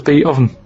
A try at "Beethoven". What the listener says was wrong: Beat oven. No, you said beat. Beat oven. It's not Beethoven.